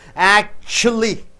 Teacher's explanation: Act should be stressed more.